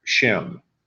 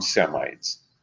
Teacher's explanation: So, you know, what happens is that through the years and in different languages, the SH sound of Hebrew is left out, and it just becomes an S sound